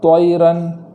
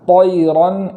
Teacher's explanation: مثال کے طور پر آواز کا چینج کر دینا، جیسے طیرن، یا ہونٹوں کا سہارا لینا طیرن، اس طریقے سے پڑھنا غلط ہے۔ تو تا کے مخرج سے ہی پڑھیں گے، اور اس میں صرف موٹی آواز کا اضافہ کریں گے